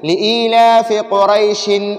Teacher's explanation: تنوین پر اب ہم غنہ نہیں کریں گے، ہم اس میں اظہار کریں گے، تنوین کو ظاہر کریں گے